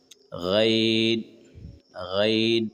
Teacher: گلے کے اوپر والے حصے سے غین ادا کریں